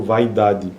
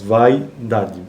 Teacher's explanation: Ditongos decrescentes orais podem ocorrer também em sílaba pré-tônica, ou seja, numa sílaba anterior à tônica. Contudo, em posição pré-tônica, a sequência de vogal glide pode alternar com uma sequência de vogais em um determinado grupo de palavras.